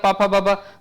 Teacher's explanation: तो आपका दांत का तो कहीं इसमें कांटेक्ट है ही नहीं पूरा जो आपका कांटेक्ट जो रहा है दोनों लिप्स के हो रहे हैं